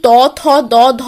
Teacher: যে বর্ণগুলি উচ্চারণ করার সময় জিভের ডগা ওপরের দাঁতকে স্পর্শ করে শ্বাসবায়ুকে বাধা দেয় তাদের বলা হয় দন্তবর্ণ।